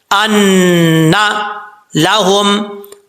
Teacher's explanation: نون مشدد ہے، ایک الف کی مقدار غنہ کر کے پڑھیں گے. ان لہم اجرن، جیم حروف قلقلہ میں سے ہے.